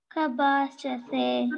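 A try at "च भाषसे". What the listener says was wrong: That ka, that is not C-A-K, that is C-A-C-H. Okay, so say Chabhashase.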